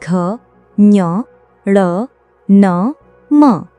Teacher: इनके उच्चारण में हवा मुख के साथ-साथ नाक से भी बाहर निकलती है। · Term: अनुनासिक व्यंजन